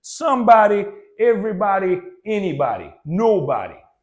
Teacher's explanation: you may put the emphasis on some, any, or every, as in somebody, everybody, anybody, nobody.